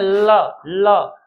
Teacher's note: पार्श्विक वर्ण पार्श्विक वर्ण उनको कहते हैं जिनके उच्चारण में हवा जीभ के बगल से जैसे हम बोलते हैं ल तो दोनों साइड से हवा निकल जाती है।